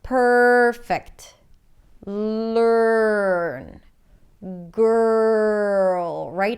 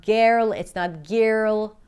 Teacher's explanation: you're practically shifting from the consonant before the R to the R directly, skipping over the vowel sound. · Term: special vowel sound